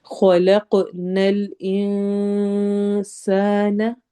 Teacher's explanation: ان، پھر خلق، خو بھی ہیوی لیٹرز میں سے ہے، موٹا پڑھا جائے گا، اور ایسے ہی قوف بھی موٹا پڑھا جائے گا اور ساتھ ہی ہم اس میں ایکو ساؤنڈ لائیں گے، قلقلہ ہوگا۔